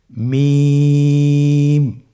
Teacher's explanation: হরফটির উচ্চারণ স্থান 2 ঠোঁটের শুকনো স্থান থেকে উচ্চারিত হয়।